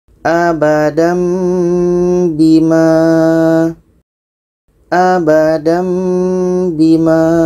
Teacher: Baris atas dengan mim kecil itu adalah tanwin atas, bermakna ini adalah dengung. Tanwin bertemu ba. Ini adalah dengung.